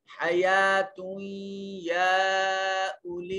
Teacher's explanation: یہاں نون تنوین کے بعد حروف یرملون میں سے یا ہے، ادغام بالغنہ ہوگا. اور یہاں یہ یا کے اوپر الف المدیہ صغیرہ ہے، اس کو ایک الف کے برابر لمبا کریں گے.